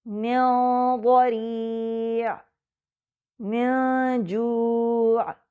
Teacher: من دون، اس صورت میں زبان نون کے مخرج پر نہیں جاتی بلکہ اگلے حرف کے مخرج کے قریب جاتی ہے جس کی وجہ سے نون کو چھپایا جا رہا ہوتا ہے۔ نون الاخفاء میں زبان نون کے مخرج کے قریب تو آتی ہے مگر اس کو چھوتی نہیں